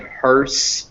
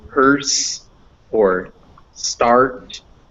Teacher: the r is coloring the vowel making it a unique sound